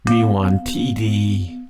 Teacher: both are flat tone, and then T falling, and then D is a flat tone.